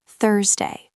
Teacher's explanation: >> Thursday starts with the th sound. It is softer, more breathy. You have to put your tongue between your teeth.